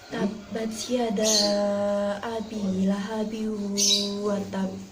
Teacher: Hukum bacaan idgham bi gunah ini berlaku apabila ada nun sukun atau tanwin bertemu dengan huruf ya, nun, mim, dan wawu. Cara membaca hukum bacaan idgham ini yaitu dengan cara mendengung selama 2 harokat.